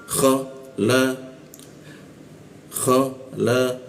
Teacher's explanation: Masuk K di mana? Atas jakun ya. K agak agak ngorok dia.